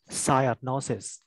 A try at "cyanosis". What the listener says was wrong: So it's not not, but it's no. Just like you say no.